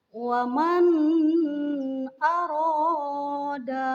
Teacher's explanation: Yang pertama ada contoh kalimat waman aroda. Di sana terdapat nun sukun menghadapi hamzah. Maka nun tersebut harus dibaca jelas, tidak boleh samar, tidak boleh dengung, karena hukum bacaannya adalah idhar.